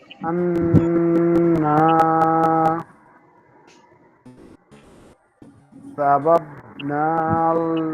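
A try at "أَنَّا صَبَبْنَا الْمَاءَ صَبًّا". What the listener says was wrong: সা হবে না। সিন জবর সা ছিল, এখন হলো সদ জবর স। তাহলে কি হয়? সবাব না হয় না?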